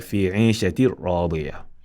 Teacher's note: He will tell you this is idgham without ghunna. Therefore, we merge the hidden noon in the ra without ghunna, without producing nasal sound or voice. We don't say fi 'ishatir ra.